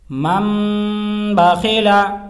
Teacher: تنوین و نون ساکن کے بعد با آئے تو نون کو میم سے بدل کر غنہ اور اخفا کے ساتھ پڑھیں گے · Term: اقلاب